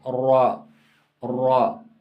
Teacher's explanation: आप अगर मसोड़ों से भी लगा दें तब भी ठीक है। तो पुश्त लिसान जब मुकाबल के तालु से लग जाए तो रा अदा होता है।